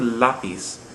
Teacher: we're not stressing the final syllable we're stressing the second last syllable